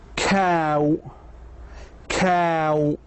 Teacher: To make ow and add a short oo after the long a sound. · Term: diphthong